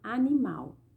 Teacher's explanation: Na palavra animal, o mal é a sílaba pronunciada com mais força. Ela é a sílaba tônica, ela está em último lugar, tá?